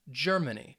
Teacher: the first syllable is going to get that emphasis